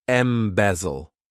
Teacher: This verb has three syllables and the stress is on that second syllable.